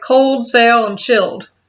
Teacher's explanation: People in Cincinnati drop their L's in a lot of words. So words like cold, sail, and chilled, which are actually kind of harder to say than I thought they would be, come out sounding kind of like cold, sail, and chilled.